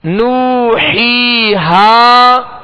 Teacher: جب نو پڑھیں گے ہونٹوں کو کامل گول کریں گے، اور ہی جب پڑھیں گے تو آواز کو گرا دیں گے، اور جب ہا کہیں گے تو آواز اور منہ دونوں کھولیں گے.